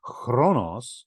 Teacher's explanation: a kind of rougher form of the K sound, chronos, then you wind up with the Greek word for time, which you can still see in English words like chronology and chronological.